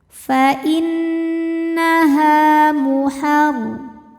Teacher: Sebab ada alif yang sebelumnya berbaris fathah. Maka huruf ha panjang dua harakat. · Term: mad thabi'i dzahiri